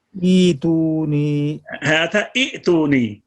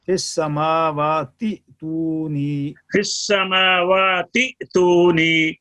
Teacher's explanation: حمزہ سے ابتدا کی صورت میں دوسرا حمزہ بدل جائے گا, لیکن درمیانے کلام میں جب پہلا حمزہ وصلی حذف ہوگا تو دوسرا حمزہ ساکن جھٹکے کے ساتھ پڑھا جائے گا